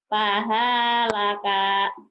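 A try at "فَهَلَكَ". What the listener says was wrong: Nggak ada yang panjang.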